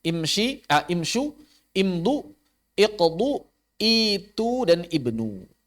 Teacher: Maka semuanya hamzah wasalnya dibaca dengan kasrah. Bukan dibaca dengan dhammah. Kenapa? Karena dhammahnya aridah.